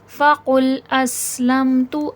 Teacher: अस में सफ़ीर है, सीठी की आवाज़ आएगी